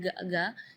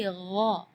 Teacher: Di ayat ini yang pertama di makhraj huruf ghain ya, ghairil maghdubi ya, perlu diperhatikan, bukan G, bukan huruf G ya, bukan ga, tapi gha. Jadi kalau ga itu dia makhrajnya dari lidah. Ya, tapi kalau huruf ghain itu dari bagian tenggorokan ya. Jadi gha.